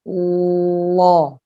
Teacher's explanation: Sedangkan lam yang tebal, maka pangkal lidah terangkat mendekati ke langit-langit mulut di belakang. Sehingga suara menjadi gemuk, tebal. Lo. Yang asalnya la jadi lo.